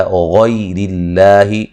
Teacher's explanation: غیر اللہ، غین کو موٹا ادا کریں گے، یا لین ہے، لفظ اللہ کو باریک پڑھیں گے، اس سے پہلے زیر ہے